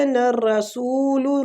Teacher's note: وَيَقُونَ الرَّسُولُ وَيَقُو کو کھینچیں گے، وہ مد ہو رہی ہے۔ الرَّسُولُ را فتح کی وجہ سے پور پڑا جائے گا، سو وہ مد کے ساتھ ہے تو اس کو کھینچیں گے۔